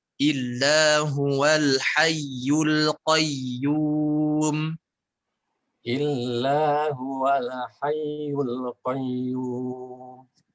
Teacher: Baik, Al-Qayyum, lamnya tidak dipantulkan.